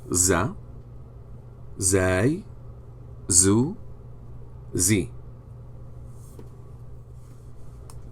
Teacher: it is produced by the tip of the tongue touching the edge of the upper two front teeth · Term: Z letter